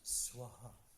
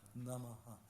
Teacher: there's like an echo of the previous vowel with the ha in front of it. So we said swa, it becomes swaha. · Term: Visarga